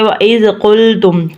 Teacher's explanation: زال کو ز کی آواز نہیں نکالنی